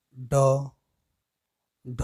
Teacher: उच्छिष्ट व्यंजन ये वे व्यंजन हैं जिनका उच्चारण करते समय जीवा का अग्रभाग तालु को झटके से स्पर्श करके हट जाती है